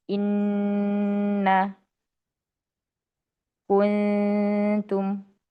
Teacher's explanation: Pastikan dengungan pada nun atau mim bertasydid ya. benar-benar ditahan ya. Hitungannya enggak bisa kita hitung dengan dua harakat, tiga harakat gitu tapi dengan talaqi ya.